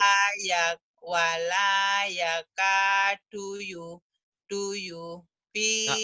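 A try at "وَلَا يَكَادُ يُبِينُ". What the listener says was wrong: Nggak boleh duyu. Nggak boleh duyu. Harus nyambung. Wala ya kadu yubi. Du yubi. Nggak boleh duyu.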